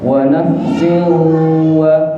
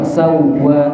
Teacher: Yang pertama lama nafsin wa karena dia ada gunnah, tapi yang sawwaha sedikit atau sebentar aja karena tidak ada gunnah.